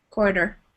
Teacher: it's written with a t and you'll hear it more like a D sound